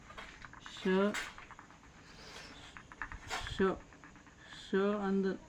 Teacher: ನಿಮ್ಮ ನಾಲಿಗೆ ತುದಿ ಮ್ಯಾಲಿನ ಅಂಗಳಕ್ಕೆ ಟಚ್ ಆಗಿ ಉಸಿರು ಹೊರಗೆ ಬರ್ಬೇಕಾದ್ರೆ ಶ ಅಂತ ಇದು ಅಕ್ಷರ ಬರ್ತದೆ. ಅದಕ್ಕೆ ತಾಲವ್ಯ ಶ ಇದರ ಹೆಸರು.